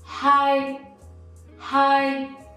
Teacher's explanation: you try to keep it stable and quite high for your tone